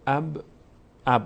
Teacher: اب یک کمی قلقله، اینو بهش میگن قلقله، یعنی لرزش. انگار که یک لرزشی مخرج در هنگام تلفظ داره